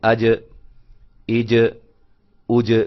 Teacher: جب ہم اس کو پڑھیں گے پیچھے زبر لگا کر حمزہ کے اوپر، آج دیکھیں نا، آج یہ جیم کی آواز جہاں رکی ہے، ٹھہری ہے، وہ حصہ ہے زبان کا درمیان اور تالو کے ملنے سے ادا ہوتے ہیں. یعنی کہ زبان کا جو درمیانہ حصہ ہے جب تالو کے ساتھ اوپر چمٹتا ہے، ملتا ہے، تو وہاں سے جیم ادا ہوتی ہے